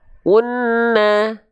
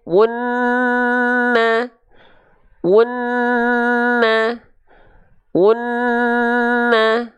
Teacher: Kadar 2 harokat gunnah itu lebih lambat sedikit secara tempo. Kalau 2 harokat kadar mad dia lebih cepat.